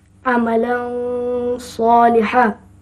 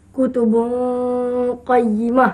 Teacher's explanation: Semuanya dengung dan juga ada berbunyi antara izhar dengan idgham. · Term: Ikhfa' hakiki